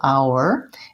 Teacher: h is silent an hour these two are the same and we just want to have enough length in the ow syllable · we just want to have enough length in the ow syllable, our. It's really a one-syllable word, but we can kind of think about it as being two syllables, our, when you go slowly.